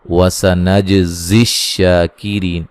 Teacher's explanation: جیم پہ قلقلہ کریں گے اور شین کو ایک الف کی مقدار کے برابر لمبا کریں گے